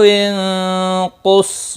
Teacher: نون ساکن کے بعد حروف اخفاء میں سے ایک حرف قاف آیا ہے، اخفاء حقیقی ہوگا۔ قاف مستعلیہ ہے، پر پڑھا جائے گا۔